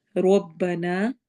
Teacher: روا کو موٹا پڑھنا ہے اور الف کو ہم نے لمبا کرنا ہے، جیسے کہ آگے حمزہ آ رہا ہے۔